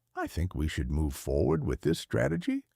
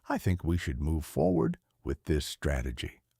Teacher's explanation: The first version, with the questioning rise at the end, signals uncertainty and asks for permission. The second version, with falling or neutral intonation, signals conviction and states a position. · Upspeak, ending statements with rising intonation, making them sound like questions. I think we should move forward with this strategy versus I think we should move forward with this strategy.